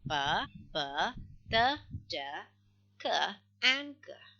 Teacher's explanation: it involves complete closure in the mouth. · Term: Plosive sound